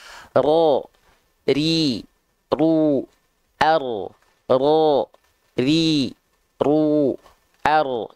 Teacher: dilafalkan dia takrir harusnya getarannya tak berlebihan ya War wririnil itu getarannya sedikit saja tapi tetap tegas lugas dan jelas · takrir itu artinya apa dia bergetar tapi tidak terlampau berlebihan alias sedikit saja ya jadi berbeda halnya dengan teman-teman melafalkan huruf r pada abjet